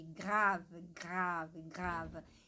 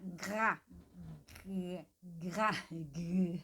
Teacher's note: Esse som de GR, ele vem lá do fundo, que nem o CR, lá do fundo, lá da base da língua, né? Que ela vai tocar, meio que vai fechar um pouco aqui a garganta, né?